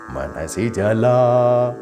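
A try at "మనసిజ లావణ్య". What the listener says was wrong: Don't cut La.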